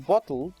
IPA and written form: bɒtl̩d (bottled)